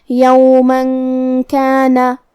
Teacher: کاف حروف الاخفاء میں سے ہے اور اخفاء کا معنی ہے چھپا دینا. تو ہم یہاں تنوین کو چھپاتے ہوئے اور غنہ کے ساتھ یہ حکم کو ادا کریں گے